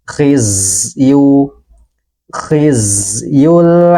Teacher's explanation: dengan jelas dan sebagian suaranya kita alirkanikal kali dikal khizyu khizyu huruf Zai dalam keadaan sukun maka suaranya harus kita alirkan